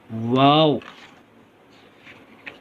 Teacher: واو جو ہے دونوں ہونٹوں کو گول کرنے سے ادا ہوتا ہے